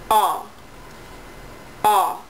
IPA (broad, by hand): ɔ